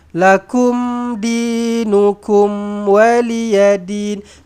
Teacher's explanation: Maka matikan dengan jelas, matikan dengan terang. Izhar syafawi di situ.